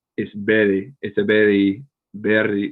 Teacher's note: it's not like a clean r it kind of sounds more like two t's like a flap